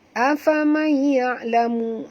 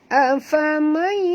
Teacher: nun mati bertemu ya, kita kena masukkan bunyi nun ke dalam ya disertai dengung idgham ma'al gunnah ya, dengung harakat tuan.